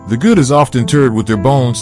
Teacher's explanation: the rising intonation on Bones concludes this thought and leads into the next section